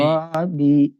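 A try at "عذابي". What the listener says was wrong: হ্যাঁ, ওটা জিমের উচ্চারণ হয়ে যাচ্ছে আপনার, এটা খেয়াল রাখবেন। আজাবি নয়, আজাবি। আজাবি।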